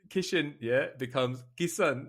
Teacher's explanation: in the sh sound he does not respect the H